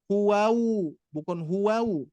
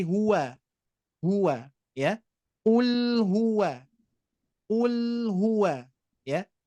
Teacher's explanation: ketika Bapak Ibu sekalian mengucapkan huwa ya, bibir kita tetap posisi di wa, membuka ya, jangan sampai mendomahkan lagi.